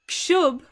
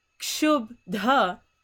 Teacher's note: And then you have kshub going to kshubdha. Again, this bha is losing its aspiration, and then it's changing into the ba. And then the ta again is going to turn, that is supposed to be added, it's going to turn into that dha.